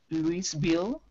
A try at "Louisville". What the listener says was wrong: Louisville. We don't pronounce the S E here. Because it's a French word. So it's like Louis the Fourth, Louis the Fifth. Yeah, so we say Louisville.